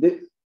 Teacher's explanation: When the takara is followed by a soft consonant, then the hard consonant becomes a soft consonant. The hard consonant ta becomes a soft consonant da.